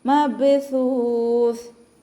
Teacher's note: സ ഉച്ചരിക്കുമ്പോൾ കുറച്ച് എയർ പുറത്തോട്ട് പോകുന്ന രീതിയിൽ വേണം ഉച്ചരിക്കാൻ. സീനായി പോകരുത് കേട്ടോ.